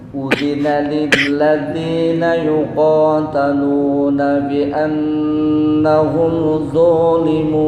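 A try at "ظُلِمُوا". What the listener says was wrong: Nah, du pendek. Zulimu. Nah, zu jangan panjang.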